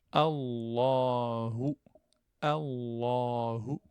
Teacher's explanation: Donc, le lem, il est emphatique, lem ou jalala, donc le lem du nom d'Allah. Et le hu, je le prononce comme un ou, donc français.